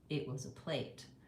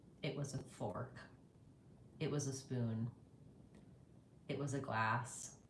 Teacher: we want the the word plate to be about as long as the words it was a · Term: stretched word